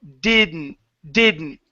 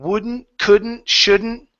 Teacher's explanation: Mix the D and the N together. You're going to focus more on the N than the D.